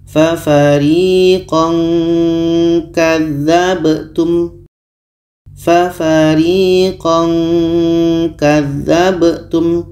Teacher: ketika sebut tanwin kita sudah merasakan huruf k jadi bunyi tanwinnya agak samar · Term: ikhfa